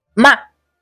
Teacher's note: tenemos el cuarto tono, que es un descendente brusco